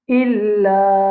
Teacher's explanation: nous besoin mettre l'emphase de sa hamza qui trouve dans illa. Alors nous besoin hamza kasra fait i illa anfusahum.